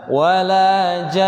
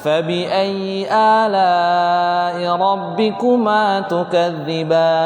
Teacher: Contohnya imam tadi baca walajan. Nah, itu karena ada panjang, nunnya berharokat tasydid dan nun punya sifat gunnah, maka double panjangnya, panjang tasydid juga. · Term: nun yang tasydid